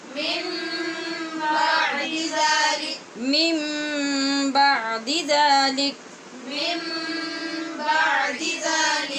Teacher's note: اقلاب کیا، نون ساکن کو میم سے بدل کر پڑھا